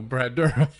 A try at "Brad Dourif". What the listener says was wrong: He's saying there's another syllable in there.